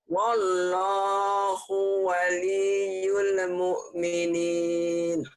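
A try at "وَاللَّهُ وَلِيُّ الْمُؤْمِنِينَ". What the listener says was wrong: Ya-nya hilang itu. Wallahu waliyul mu'minin.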